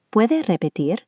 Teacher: observe the single tapped R at the end of repetir